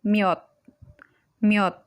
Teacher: if the aspirated chiut is in the final position, the sound value is T, letter T.